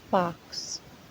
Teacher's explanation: Short vowel sounds pronounced in back of vocal tract and the tongue in open of the mouth and lip is rounded.